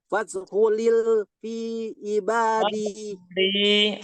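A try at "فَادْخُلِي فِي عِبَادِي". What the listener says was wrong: Fadkhuli panjang.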